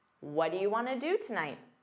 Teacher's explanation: Want to becomes wanna in fast speech. · What do you becomes what'ya in fast speech.